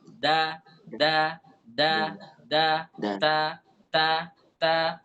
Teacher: tapi kalau dal dalam bahasa Arab itu ujung lidah dengan tempat tumbuh gigi atas